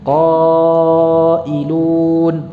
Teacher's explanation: Itu panjangnya qa itu seukuran kita mengucapkan 5 qaf yang berharakat. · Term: 5 harakat